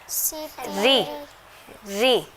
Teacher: را کو زیر کی صورت میں جب را کے نیچے زیر آئے گی تو اس کو باریک پڑھیں گے، روئی نہیں پڑھیں گے، موٹا نہیں کریں گے، باریک پڑھیں گے